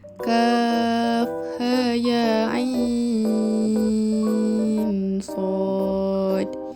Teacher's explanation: huruf ain itu dibaca dengan 4 dan 6 harakat. Malah 6 harakat itu diutamakan.